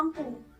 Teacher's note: Konsonan yang dihasilkan dengan mengaitkan lidah ke langit-langit sehingga udara terpaksa diaduk dan dikeluarkan melalui kedua sisi lidah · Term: konsonan lateral